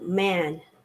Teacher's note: man es la A corta del inglés, que es como intermedio entre una A y una E.